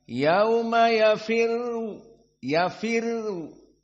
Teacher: yafirru dalam keadaan muraqoqoh bukan mufakhamah meskipun dia adalah dah namun sebelumnya kasrah maka dibaca ya ir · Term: muraqqaqah